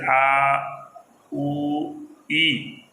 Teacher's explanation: اب الف ہے، واو یا، یعنی یہ الف مدہ، واو مدہ، یا مدہ، ان حروف کو ادا کرتے وقت کیا ہے، ان کا مخرج متعین نہیں ہے، بلکہ ان کی آواز کیا رہتی ہے، ہوا کے اندر رہتی ہے، جیسے آ، او، ای، یہ ہوا کے اندر کیا ہوتی ہے، ان کی آواز ختم ہو جاتی ہے، لہذا ان کو جوفیہ کہا جاتا ہے۔